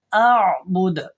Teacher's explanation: عین کی آواز میں وائبریشن ہوتی ہے، وائبریٹ ہوتی ہے آواز، لیکن حمزہ کے اندر ایسا نہیں ہوتا بلکہ جھٹکا ہوتا ہے